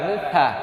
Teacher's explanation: জিহ্বার আগা দাঁতের আগা